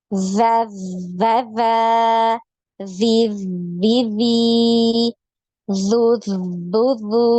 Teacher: jadi ketika tasdid, ya, tidak putus suaranya. Kenapa? Karena ada aliran suara, ya.